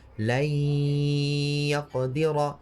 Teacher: In the same way, you're going to have to soften the sound of the ya. So if you say lay yaqdira like a normal shadda, then you won't be able to do the gunna. You have to make it soft. لن يقدر. So wherever you're pronouncing the waw from or the ya from, instead of fully engaging and fully saying it from that part, you'll just make it a bit softer.